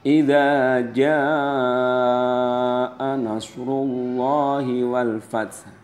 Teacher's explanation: pada kata jaa itu wajib dibaca 5 ketukan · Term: mad wajib mutasil